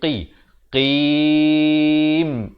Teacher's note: Qaf. Makhrajnya di pangkal lidah.